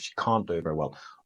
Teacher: you don't actually hear the T of can't.